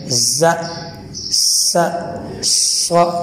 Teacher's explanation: इन तीनों को अदा करते वक्त सीटी की आवाज़ निकालनी चाहिए, अलबत्ता स्वाद को मोटा और ज़ा को सख्ती के साथ और सीन को नरमी के साथ अदा करना चाहिए।